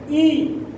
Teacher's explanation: जीभ देखिए ऊपर तालुआ की तरफ चिपक जाती है